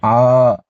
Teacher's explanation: உச்சரிக்கும் போது ஆ அப்படின்னு இரண்டு மாத்திரையும் இந்த ஒரு மாத்திரை சேர்த்து மூன்று மாத்திரை அளவு நீண்டு பிளவுபடாமல் உச்சரிக்க வேண்டும்